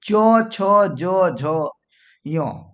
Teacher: तालु से आपको चौवर्ग बोला जाएगा, यानी कि च छ ज झ य